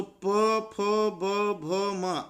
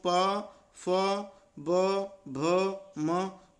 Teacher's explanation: तो प, फ, ब, भ, म। अरे ये सब तो बोलने में सब पूरे दोनों होंठ हमारे टच हो रहे हैं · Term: ओष्ठ